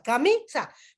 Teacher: no tiene tilde esta palabra camisa pero el tono de voz o la sílaba tónica viene a ser la mi